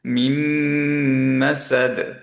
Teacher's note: মিম ধরে রাখলাম কারণ মিমে গুন্না